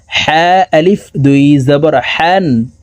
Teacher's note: হা হরফকে হলুকের মধ্যখান থেকে উচ্চারণ করে পড়বো কারণ হার মাখরাজ হলুকের মধ্যখান থেকে হবে হা আলিফ দুই জবর